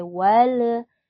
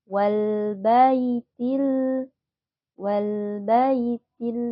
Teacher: hati-hati lam sukun tidak boleh memantul ya Enggak boleh Wal tapi kita harus tahan dulu sebentar waltil wtil